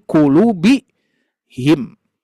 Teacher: Ketika hum ini ditempelkan dengan kulubin, maka mau tidak mau tanwinnya dihilangkan. Tanwinnya dihilangkan, maka jadi kulubi him.